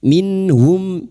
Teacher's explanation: Nun sukun bertemu ha idhar halki. Nun sukun dibaca jelas tanpa mendengung. Bertemunya nun sukun atau tanwin dengan salah satu dari huruf 6 ini termasuk huruf ha, maka nun sukun dibaca jelas tanpa mendengung. · Mim sukun dibaca jelas tanpa mendengung idhar syafawi